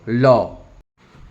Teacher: যে ব্যঞ্জন ধ্বনি উচ্চারণের সময় শ্বাসবায়ু জীভের দুপাশ দিয়ে মৃদু বের হয় তাকে পার্ষিক ধ্বনি বলে